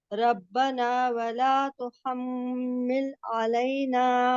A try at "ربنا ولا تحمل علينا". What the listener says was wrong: نہیں، تو حمل نہیں ہے نا، غور سے دیکھیں نیچے والا تو ہے اور تو حمل وہ ہے، لیکن تحمل.